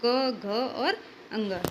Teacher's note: क वर्ग में अगर पूछे कि सघोष कौन सा है तो ग घ और अंग